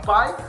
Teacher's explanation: Na sílaba pai, a gente vê que a letra A ela tem mais força, mais foco. Ela trabalha como base daquela sílaba, como núcleo daquela sílaba. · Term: semivogal